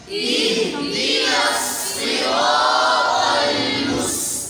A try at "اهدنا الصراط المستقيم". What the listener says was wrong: اہدینا صاد پڑھیں سین نہیں پڑھیں. آپ سین پڑھ رہے ہیں. صاد کے نیچے زیر پورا نہیں پڑھا جا رہا.